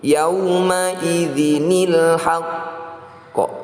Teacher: "Yauma'idzinil haqq." Nah, di sini ada qalqalah, yang artinya memantul. Qalqalah ini disebut qalqalah kubra karena terletak di akhir kalimat. Sebagian orang juga menyebutnya qalqalah akbar karena ada tashdid di sini. · Sebagian orang juga menyebutnya qalqalah akbar karena ada tashdid di sini. Jadi, untuk qalqalah, atau pantulan, kita membacanya dengan pantulan tetapi menahannya terlebih dahulu , bukan pantulan langsung. "Yauma'idzinil haqq." Jadi, itu ditahan selama sekitar satu atau dua ketukan. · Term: qalqalah kubro